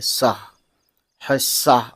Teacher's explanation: حصہ سواد کی آواز ڈبل ہو رہی ہے، ڈبل ساؤنڈ آ رہی ہے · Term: تشدید